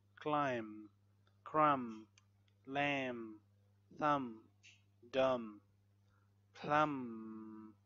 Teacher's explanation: when there is M before the B, so don't say B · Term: Silent B